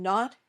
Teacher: the top of your mouth just behind your top teeth and the air comes out of your nose this sound is voiced